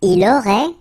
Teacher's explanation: Final T is not pronounced.